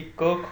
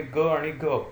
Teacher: क, ख चा उच्चार करत असताना तीव्रता दिसून येते तुलनेने ग आणि घ ह्यांचे उच्चार कोमल किंवा मृदू होतात हे देखील आपल्या लक्षात येतं. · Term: कठोर